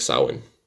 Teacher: that AMH in Samhain, that gives it that ow or W sound.